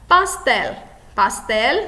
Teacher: como a sílaba mais forte é a última, nós classificamos como aguda